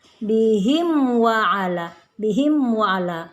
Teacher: Mim sukun dengan waw adalah izhar syafawi, jadi bacaan tidak boleh didengungkan tapi dibaca jelas